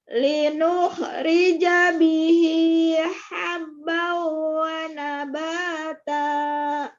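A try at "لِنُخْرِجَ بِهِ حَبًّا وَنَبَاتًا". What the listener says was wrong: Khoknya linukhrija. Khoknya. Khoknya belum stabil, belum konsisten.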